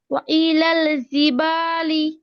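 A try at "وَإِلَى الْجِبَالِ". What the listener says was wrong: ও জিমটা শক্ত হবে। জিম শক্ত আপু, জিম শক্ত। জিম জেড জি, জিম জেড জি।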